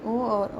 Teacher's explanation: ये कंठ और ओष्ठ दो जगह से बोले जाते हैं। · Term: कंठ ओष्ठ